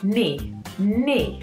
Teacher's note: we spell this word, as you can see, with a K at the beginning, but we do not pronounce the K. So it is knee.